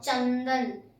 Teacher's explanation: अनुस्वार में नाक से उच्चारण होता है, जैसे हम कुछ भी बोले तो नाक से, जैसे चंदन, इसमें नाक का हम लोग को निकलता है, चंदन हो गया।